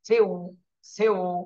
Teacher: সি এর উচ্চারণটা ঠিক থাকবে পরে ঠোঁট গোল হয়ে যাবে · সিন ওয়াও জের সিউ, ওয়াওয়ের সময় ঠোঁট গোল হয়ে যাবে, সির উচ্চারণটা ঠিক থাকবে, পরে ঠোঁট গোল হয়ে যাবে, সিউ, সিউ। সিন ওয়াও জের সিউ।